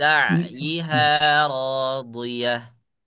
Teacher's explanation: bukan lisha, tapi lisa. Ah, Sin biasa. S biasa.